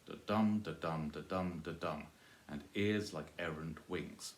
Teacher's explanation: it's 6 syllables, alternating soft, stressed, soft, stressed, soft, stressed